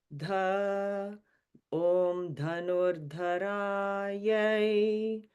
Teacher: So we go low, low, low, middle, high.